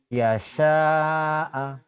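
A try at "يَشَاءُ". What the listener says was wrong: Kan ini pemanjangnya ada baris. Jadi pendek semua. Yasha'a. Yasha'a. Yasha'a. Yasha'a nyambung ya.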